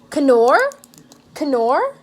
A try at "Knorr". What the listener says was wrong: Nor, you idiot. You don't pronounce the K. She can't say nors. Canor.